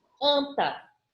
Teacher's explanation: Na palavra anta, o A e o N se juntam para formar apenas um som. É como se eu tivesse esse sonzinho nasal aqui. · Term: dígrafo vocálico